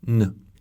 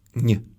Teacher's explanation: It has two kinds of the “n” sound: the first is hard: [n], the second is soft